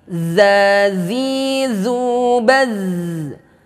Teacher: ujung lidah kita ini menempel kepada ujung gigi seri atas kita menyentuh dengan ujung gigi seri atas kita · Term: huruf dza